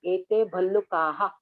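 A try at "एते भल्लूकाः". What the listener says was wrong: You say Ballukah, both look same. Ballukah, Ballukah. You have to say Dirga. Ballukah. Not Ballukah. Ballu is Dirga and Ka is that is also Dirga. Ballukah. Ete Ballukah.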